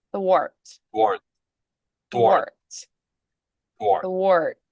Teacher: I'm bringing the lips forward and pulling that tongue back from between the teeth simultaneously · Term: unvoiced th